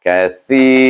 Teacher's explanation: si ini kita baca panjang kerana dia bertemu dengan ya. · sa ini bukan sin, bukan shin, tapi dia sa, iaitu di mana makhrajnya belakang hujung lidah kita bertentangan dengan gigi kacip keluarnya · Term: mad asli